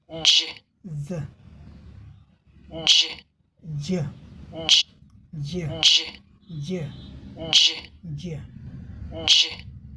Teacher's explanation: दो व्यंजन ध्वनियों का कॉम्बिनेशन से बना है। लेकिन एक ही ध्वनि है।